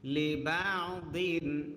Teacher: লি, বা আইন জবর বা, লিবা, দদ দুই জের দিন, লিবাদিন, নুন সাকিন ইজহার আইন থাকার কারণে